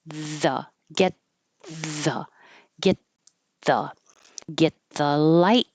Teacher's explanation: I am going to push my tongue further forward than I would a regular T up here because it's getting ready for the TH. So get, I can put my tongue between my teeth and block the airflow, get and then it's already in the right position for I just release the tension.